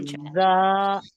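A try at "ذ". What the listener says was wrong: It's still a little heavy, inshallah, but we'll work on it.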